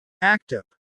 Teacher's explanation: Act up, the T connects with up